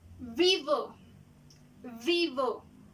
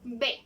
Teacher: V es con los dientes. La B va a ser tocando nuestros labios